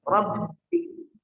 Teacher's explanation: Rabbiki ba-nya ditekan dan dikasih tempo. Sejenak rabbiki.